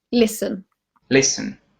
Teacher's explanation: you do not pronounce T in listen